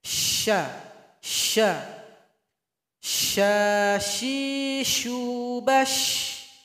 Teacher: Tengah lidah. Tempelkan ke langit-langit dan keluarkan banyak angin, banyak lagi daripada huruf sin tadi. · Suara anginnya lebih banyak daripada sin. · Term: huruf shin